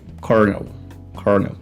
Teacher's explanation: a gente tem aqui uma palavra que tem um L entre vogais, mas que recebe aqui um som de R, desse R retroflexo